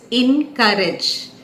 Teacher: the second syllable is to be stressed